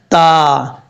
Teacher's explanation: تا کا مخرج ہے زبان کی نوک اوپر والی دانتوں کی جڑوں سے لگے تو تا پڑھا جاتا ہے، تا۔ دو نقطوں والا جو تا ہے یہ باریک پڑھا جاتا ہے، اس کو پر نہیں پڑھتے۔